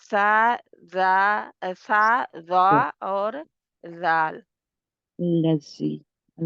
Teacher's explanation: زال کا مخرج حروف لسویہ ہے، جو زبان کی نوک اوپر والے 2 دانتوں کے سرے سے لگتی ہے، یعنی زبان کا بھی سرا اور 2 دانتوں کا بھی سرا.